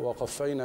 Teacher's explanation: أحرص على الهمس في حرف الفاء وقبله أرقق الواو والقاف